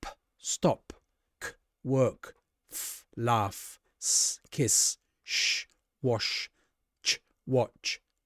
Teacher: we make no sound in our throat here. No vibrating sound here.